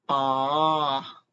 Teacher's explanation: The third tone is fall and rise again. It's actually curved dipping.